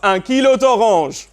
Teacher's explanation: So instead of saying, Un kilo de orange, with two vowel sounds next to one another, they join them together so it becomes d'orange